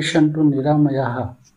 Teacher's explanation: विसर्ग का उच्चारण हल्के हा के साथ में करना चाहिए। विसर्ग को जल्दी बोलना मतलब जब हम विसर्ग का उच्चारण करते हैं तो इसे बहुत धीमा नहीं बोलना चाहिए।